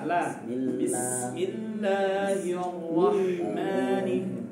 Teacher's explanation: Harakat kasrah sebelumnya menjadikan sebab lamnya tipis.